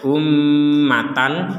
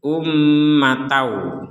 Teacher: tanwin bertemu wau maka kita juga sama memasukkan tanwin ini kepada huruf wau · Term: dengung dulu baru ke WA